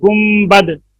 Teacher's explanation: نون ساکن یا نون تنوین کے بعد با آ جائے تو نون ساکن اور تنوین کو میم سے بدل کر غنہ اور اخفا کے ساتھ پڑھنا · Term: اقلاب